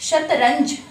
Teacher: बिंदु को अनुस्वार कहा जाता है, और इसका उच्चारण नाक के द्वारा किया जाता है